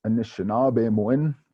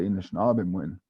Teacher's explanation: Odawa and Eastern Ojibwe dialects show vowel syncopation.